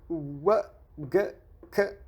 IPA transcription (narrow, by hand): w w̃ g k